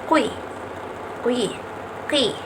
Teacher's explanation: Nah, dapat kita rasakan teman-teman bahwa pangkal lidah ketika menyebutkan kedua huruf itu akan menyentuh anak tekak. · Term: bunyi dorsouvular